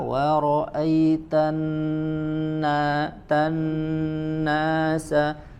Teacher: pada huruf nun tasydid ada tambahan dengungnya ditahan tidak tergesa-gesa.